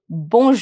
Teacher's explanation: my R is going to be very very mild it's going to be very light towards the end